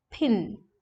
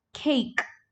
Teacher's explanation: a little puff of air should come out of the mouth that is called aspirated so in rp they are aspirated but in gi these voiceless